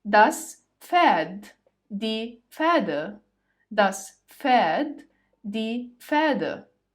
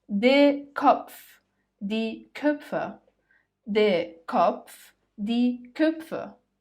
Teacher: And finally, when you see PF, it might look like the P is silent, while in fact it's not. You say the P, but lightly, and the stress here is on the letter F.